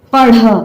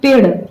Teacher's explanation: जब ढ़ बोल रहे हैं तो ज्यादा समय लग रहा है और जब ड़ बोल रहे हैं तो कम समय लग रहा है, तो ये अल्प प्राण हो जाएगा और ये महाप्राण हो जाएगा।